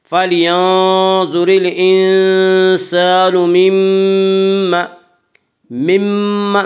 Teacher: میم شدد غنہ ہوگا، غنہ کی مقدار 1 الف ہے۔